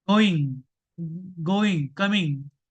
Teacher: voiced velar nasal sound